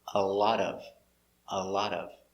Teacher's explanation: put the words together with the t sounding d